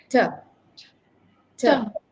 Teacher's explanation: the tip of the tongue should be at the beginning of the ridge of your teeth then you throw out a puff of air